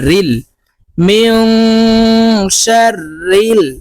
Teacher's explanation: নুন জের ইকফা গুন্না নুন সাকিনের পরে ইকফার হরফ সিন তাই এই নুনকে নাকের ভিতরে লুকাইয়া গুন্নার সহিত পড়বো